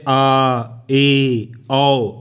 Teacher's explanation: विवृत, open, इसको बोलने में मुंह पूरा खुल जाता है